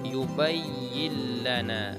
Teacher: Akan tetapi yang membedakan antara idgham bi gunnah dengan idgham bila gunnah, bahwa di idgham bila gunnah ini tidak dibaca secara berdengung, artinya dibaca secara jelas